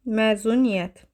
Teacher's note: Saitlərdən biri uzun tələffüz olunur. Bax, burada Ə uzun tələffüz olunur.